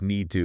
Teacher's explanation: the t almost disappears